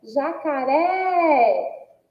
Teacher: Uma oxítona também, que tem aí, ó, o ré como sílaba tônica e que o som é aberto, então recebe acento agudo.